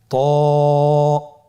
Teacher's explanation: জিহ্বার আগা সামনের উপরের দুই দাঁতের গোড়ার সঙ্গে লাগিয়ে উচ্চারিত হয়।